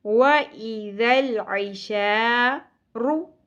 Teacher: ऐशारु ऐन वस्ते हलक से. शा ज़बर के साथ अलिफ हरफ मद्दा है, एक अलिफ के बराबर खींचिए. वइज़ल ऐशारु रॉ पुर पढ़ी जाएगी.